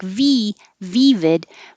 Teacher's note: vid is the i in hit so make sure that your tongue isn't too high